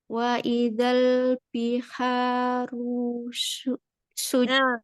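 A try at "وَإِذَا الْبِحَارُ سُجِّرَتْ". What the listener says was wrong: Sin tadi tipis, roknya sudah mulai naik tebal.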